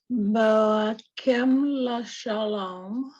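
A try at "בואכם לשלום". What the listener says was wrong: All right, so it's Belachem. It's a chaf. It's it's a ch. Yeah, it's like from the back of your throat.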